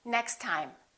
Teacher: we only pronounce one t